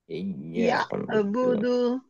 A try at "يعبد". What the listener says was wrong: ইয়াটা ঠিকই থাকছে, যখন আইনে যখন যাব তখন বলবো ইয়াবুদু, আইনে ধরে রাখবো, দেখেন। ইয়া বলে ধাক্কা দিবেন না, ইয়া বলে ধরে রাখবেন গলার মাঝখানে, ইয়াবুদু।